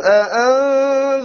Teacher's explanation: clearly notice how he said the أأنذرتَ, the very crisp two hamzas over here